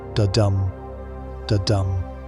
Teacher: Iambic refers to an iamb, which is an unstressed syllable followed by a stressed syllable. Think of it like a heartbeat.